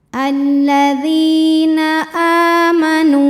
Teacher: hamzahnya ini dalam bentuk Alif dengan harakat fathah panjang maka cara bacanya dipanjangkan dua harakat